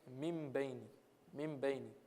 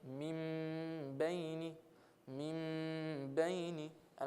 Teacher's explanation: But if I put ghunna, I'm saying min bayni, min bayni, and I'm holding it for just a short amount of time, 2 harakat. I'm holding it for 2 harakat, and I'm making a nasal sound.